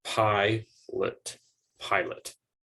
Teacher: to the schwa sound a go same with agree or pilot in the case of pilot it's the second syllable that receives the unstressed vowel sound because the first syllable is stressed